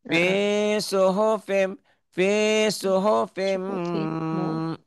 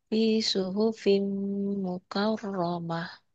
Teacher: M-nya ditahan ya gunnah